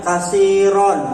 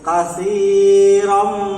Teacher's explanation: Jadi kalau tadi idgham bila gunnah itu dibaca masuk tapi tidak ada dengung, sekarang idgham bi gunnah dibaca masuk tapi dengan dengung